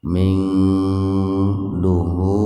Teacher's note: Nun sukun bertemu dengan dha secara terpisah. Jadi dibacanya samar. Kira-kira perpaduan antara bunyi N dengan ang. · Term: ikhfa hakiki